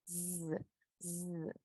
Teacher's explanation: De como si estuviera haciendo yo una S, pero la Z que dice fuerte, como el zumbido de una abeja